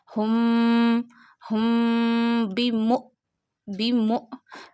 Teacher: Read hamza sakina with a sudden jerk. Meme hamza zama mu.